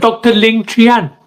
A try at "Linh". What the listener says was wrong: Well, you said Lin, but I'll let that slide for now.